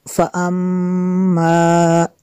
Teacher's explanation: मीम शद्दद है, यहाँ पे गुन्ना करना है।